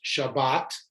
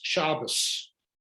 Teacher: which in sephardic is always shabbat but in ashkenazic is shabbos